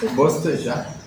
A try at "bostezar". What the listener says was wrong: Bostezar con Z. Es que ustedes no usan la Z. Bostezar.